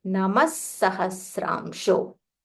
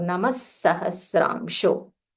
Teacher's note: Visarga Namaha followed by Sahasramsho. So it will be Namas Sahasramsho. That sir, just stress a little more.